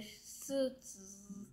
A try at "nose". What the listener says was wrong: z가 좀더 맞아요.